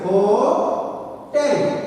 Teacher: And stress is on the second syllable, not on the first syllable. Not hotel. Hotel.